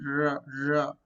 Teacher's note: post alveolar. Just behind alveolar